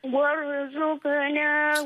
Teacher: Tekan kat huruf ra tadi bagi jadi berat sikit. Boleh jadi tebal sikit.